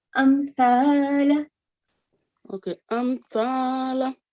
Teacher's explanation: you have to clearly pronounce the sound of meme only for 1 second.